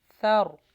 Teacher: فا، ثر، یہاں پہ رو کو موٹا کیجئے۔ ثر، سا کا مخرج سافٹ لگے گا۔